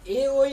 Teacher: আমরা কণ্ঠ আর তালব্য এই দুইটার সমন্বয়ে আমরা উচ্চারণ করি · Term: কণ্ঠ তালব্য বর্গীয়